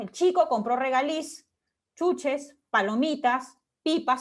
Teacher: En este caso, cada enumeración acaba con un tonema descendente, excepto la que se encuentra delante de la conjunción i, ¿no? U o, que tiene el tonema ascendente.